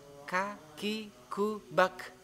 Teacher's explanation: tapi k-nya ini ada udara yang keluarnya karena termasuk huruf hamas